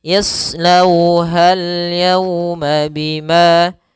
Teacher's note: pada lafal bima ada mad tabi'i, yaitu fathah bertemu dengan alif, panjangnya 2 harokat · Kemudian yauma sama seperti sebelumnya pada lafal lau, yaitu ada bacaan lin, yaitu lembut dalam pelafalannya dan tidak boleh dihentakkan. Tidak boleh yauma, tidak, tapi dia lembut saja.